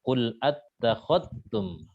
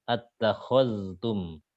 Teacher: Idghamnya kamil. Jadi zalnya hilang langsung. Zalnya hilang. Qadtum langsung masuk ta.